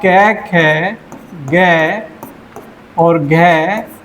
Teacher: कै वर्ग के सामने वाले व्यंजन कंठ से बोले जाएंगे